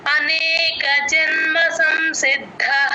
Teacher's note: చెప్పాలి జన్మ సంసిద్ధః సి కి దా ని జాయిన్ చేసి చెప్పాలి సిద్ధః ద కింద దా వత్తు మహాప్రాణం రెండు వినిపించాలి సిద్ అని ఒక్క సెకండ్ ఉంచితే ద కింద దా వత్తు క్లియర్ గా